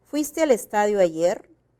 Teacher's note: el tono final es ascendente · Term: tono ascendente